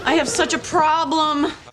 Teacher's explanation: The I in this sentence is a diphthong, and the /ɑː/ in pro is a long vowel · The last lem is listed as a light vowel in the dictionary, but it's said clearly and with a bit of emotion